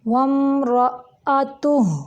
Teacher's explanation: وم رأتہ، را موٹا ہے، حمزہ جھٹکے سے پڑھیں گے، تا کے اوپر پیش ہے، اس کی ادائیگی کے وقت ہونٹوں کو تھوڑا گول کریں گے، اور ہا کے اوپر الٹا پیش ہے، اگر ہم ملائیں گے تو اس کی 2 حرکات عربیہ جتنی اس کی لمبائی کر کے پھر اگلا لفظ اٹھائیں گے۔